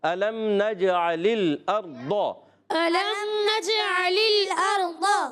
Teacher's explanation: الم نجعل الارض، ألم نجعل الأرض ارض میں را ساکن سے پہلے زبر آ رہا ہے، اس لیے را ساکن پر ہو جائے گا، را کو پر کر کے پڑھیں گے۔